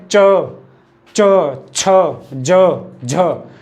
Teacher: जब हम इनका उच्चारण करेंगे च, छ, ज, झ, तो जो श्वास वायु है वो घर्षण के साथ बाहर निकल रही है, तो इन च वर्ग के प्रथम चार व्यंजनों को हम बोलेंगे स्पर्श संघर्षी व्यंजन।